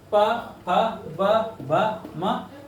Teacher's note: प फ ब भ म ओष्ठ से बोले जाते हैं